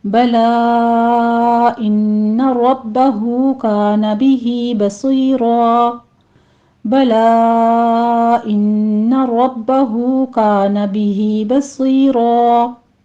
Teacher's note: फतहतैन है तो इसे हम अलिफ मद्दा से बदल देंगे, मद इवज होगी, यहाँ पे सिर्फ 2 काउंट करना है।